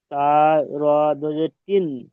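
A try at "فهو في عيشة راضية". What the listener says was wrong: তিন নয়, তীর, র উচ্চারণ হবে।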